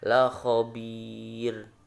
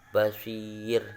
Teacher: Ro yang terletak setelah ya sukun, itu dibaca tipis. Ada ro sebelum ro itu ada ya sukun.